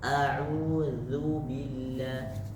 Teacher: zu-nya sudah hampir benar, tinggal ditipisin sedikit, Pak. A'udzu, jangan dihembus.